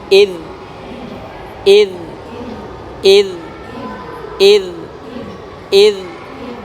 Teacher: Kemudian yad. Kemudian huruf zal sukun, makhrajnya ujung lisan dengan gigi seri atas